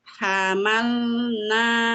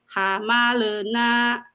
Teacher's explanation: Jadi kalau pas penyebutan atau pelafalan lam sukun, lidahnya ditempel ke langit-langit yang bawah, yang bagian huruf la.